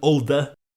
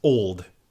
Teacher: We lose that eh at the end of the word as we transition to modern English. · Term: apocope